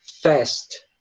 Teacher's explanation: Essa letra A, no inglês americano, ela tende a se transformar num som de E